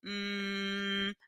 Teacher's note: pescoço hum mala ponto bilabial Olha lá os lábios Unidos hum modo do nasal por quê Porque o ar tá saindo pelo nariz tá vibrando o meu nariz Hum e sonoro porque vibra o